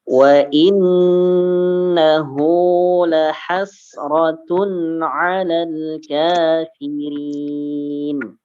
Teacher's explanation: hu-nya ini panjang ya, 2 harokat ya